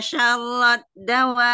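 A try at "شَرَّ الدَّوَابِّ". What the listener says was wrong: Ini kata dawabi, kenapa gak ada nabernya? Karena kalah sama nada Mi, gak kedengaran nabernya. Kalau nada Umi kan gitu gak ada. Cuma naik turunnya enggak naik beneran naik. Dawabi kan enggak ada kayak gitunya. Dawabi na na na na na na gitu-gitu aja.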